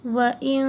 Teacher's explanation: نون کی آواز کو ناک میں چھپا کر پڑھیں گے، اسے کہتے ہیں غنہ